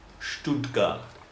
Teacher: I'm just sort of sieving the sounds through my teeth in a way. It's just there's a little bit of space left.